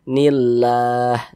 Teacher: maka lafaz Allah dibaca tipis. Jadi lam jalalahnya ini kita baca tipis.